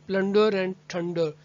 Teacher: a rhyme in which the emphasis falls on the penultimate